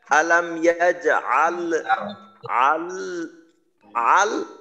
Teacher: শেষ লামের মাখরাজ থেকে যখন পৃথক হবে তখন যেন আবার ল এই ধরনের আওয়াজ না হয়।